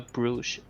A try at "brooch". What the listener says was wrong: But you said bruise.